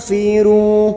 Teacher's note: pada saat menyamarkan bunyi nun sukun bibir kita siap-siap membunyikan huruf depannya yaitu huruf Fa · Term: Ikhfa ausat